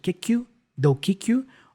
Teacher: the k for kick can be joined with the u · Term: Connected speech